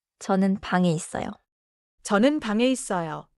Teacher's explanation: Smooth final, 이응, no hard G kick.